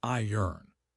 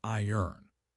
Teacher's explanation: The R is almost silent or moves to the end.